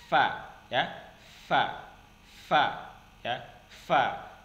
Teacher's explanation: keluar dari bibir bagian dalam bertemu dengan ujung gigi bagian atas